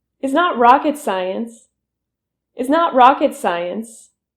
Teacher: you pull your tongue back and that you push your lips forward for the R sound in rocket.